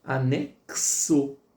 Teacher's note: Porque o X ele tem o som de c e o som de s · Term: dois fonemas